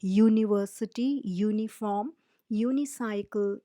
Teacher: Another example would be a uniform, because all these words, though they start with a vowel sound U, they are pronounced with the Y sound